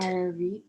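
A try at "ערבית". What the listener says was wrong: Arvit, right? Not Arbit. Arvit.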